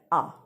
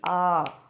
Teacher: अब जब हम आ का उच्चारण कर रहे हैं तो यहाँ पर 2 चुटकी बजने तक का समय लगेगा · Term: दीर्घ स्वर